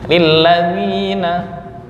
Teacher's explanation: Lilladzi i sempurna, jangan dicampur dengan e.